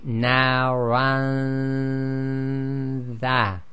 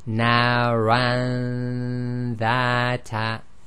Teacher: we move the tongue or the organs in the mouth directly to the articulation point of the next letter, which in this case is the dha. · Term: ghunna